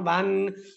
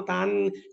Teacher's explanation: আরেকটা কথা আপনাদেরকে জানিয়ে দেই, ২ জবর, ২ জের এবং ২ পেশ পড়ার সময় আপনাদেরকে অবশ্যই উচ্চারণকালে শেষের দিক দিয়ে বাংলাতে দন্তার্ণর উচ্চারণ দিবে।